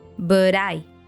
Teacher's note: The T stands between the two vowels and it turns into a D sound.